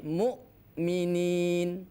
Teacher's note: Muru tidak boleh ata itu berarti tidak terputus. Jadi sifat syiddah pada huruf hamzah itu harus nampak, artinya terhenti ketika disukunkan atau ditasdidkan.